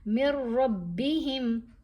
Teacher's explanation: اب اگر یہاں نون تو خاموش ہو گیا، میم کو ہم نے را سے ملانا ہے لیکن غنہ نہیں کرنا